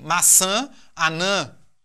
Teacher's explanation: Nós temos uma conformação perfeita a partir da vogal tônica, né? Que é justamente o A, né? O A nasalizado, né? O AN, certo?